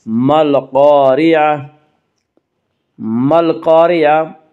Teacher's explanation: مل قارعہ کی را کو باریک پڑھا جائے گا۔ اس کا قاعدہ ہے کہ را کے بعد زبر پیش آئے تو را کو پر پڑھا جائے گا، اور را کے نیچے زیر ہے تو را کو باریک پڑھا جائے گا، یا را کے نیچے زیر ہے اس سے را کو باریک پڑھیں گے۔